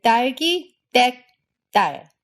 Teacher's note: It's totally unaspirated, and again, the tension in your throat will make the vowel afterwards be a bit higher pitched. So it's not just 댁, it's 댁. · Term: tense T